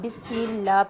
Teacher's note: یہاں پر دیکھیے گا بسم اللہ میں جو مسٹیک ہوتی ہیں وہ ہے کہ یہاں پر جو اللہ کی جو لام ہے اسے زیادہ تر لوگ جو ہیں وہ موٹا پڑھ دیتے ہیں، اسے جو ہے وہ باریک ادا کریں گے